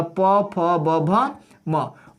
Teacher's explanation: होठ को पकड़ करके अगर हम प फ बोलेंगे तो दूसरा ही चीज बोला जाएगा। तो यहाँ पे ओठ के बिना इन सबका उच्चारण नहीं हो सकता, इस वजह से इनका उच्चारण स्थान क्या हो जाएगा? ओष्ठ हो जाएगा · अब इस सबको बोल के देखिए, आपका ओठ दोनों सटेगा। होठ को पकड़ करके अगर हम प फ बोलेंगे तो दूसरा ही चीज बोला जाएगा।